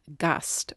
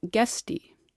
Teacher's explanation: For example, the Old German word for guest, Gast, was Gasti in the plural, but that E ending pulled the A forward to E, making it be pronounced as Gesti. From A to E, you can feel the position of your tongue move up and forward, closer to the position for E.